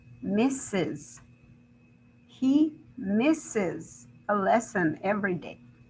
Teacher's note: that e s is actually pronounced as an additional syllable